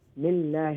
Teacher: So the name of Allah is going to be empty mouth. Because there's a kasra before it.